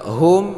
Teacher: Nah, panjangnya dua harakat juga. Hum ini tidak dengung, yaitu idhar syafawi, ya. Bukan idhar hakiki tapi idhar syafawi.